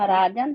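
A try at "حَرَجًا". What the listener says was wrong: आलिफ लगा दिया आपने, मद लेटर बना दिया, वो ख्याल रखना।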